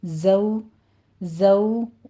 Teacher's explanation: زو میں زے کی آواز قوی آواز کے ساتھ سیٹی کی آواز کے ساتھ پڑھیں گے ، زو، زو، ہونٹوں کو ناتمام گول کرتے ہوئے 1 سے · ہونٹوں کو ناتمام گول کرتے ہوئے 1 سے 2 حرکات کے درمیان ہم واولین ادا کریں گے